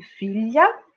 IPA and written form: FIʎA (filha)